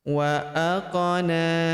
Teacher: Huruf qaf berharokat sukun kita pantulkan atau kita qalqalahkan